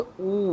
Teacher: तो जैसे हम बोलेंगे ऊ, तो हमारे होठ जो है गोल हो जाएंगे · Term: वृत्तमुखी